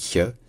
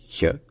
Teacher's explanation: Il se dit ch, c'est-à-dire un petit peu comme un CH, mais sur le palais, comme pour prononcer un y. Donc ça devient ch.